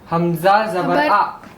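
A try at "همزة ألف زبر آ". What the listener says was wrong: ऐसे नहीं पढ़ते। हमजा अलिफ ज़बर आ। ऐसे नहीं पढ़ना कि हमजा ज़बर अलिफ, ऐसे नहीं। ये अलिफ जो है हमजा से मिला हुआ है, ठीक है।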